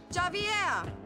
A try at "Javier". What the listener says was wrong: It's Javier. It's pronounced like an H. Javier.